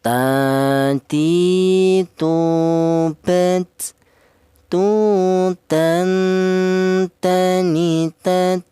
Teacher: Untuk huruf ta ini keluarnya huruf berasal dari ujung lidah menyentuh pangkal gigi seri atas